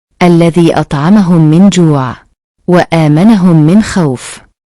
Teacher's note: Cara membacanya adalah memasukkan huruf mim ke dalam huruf mim disertai dengan suara guna sekitar dua ketukan atau harakat. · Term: idgham misli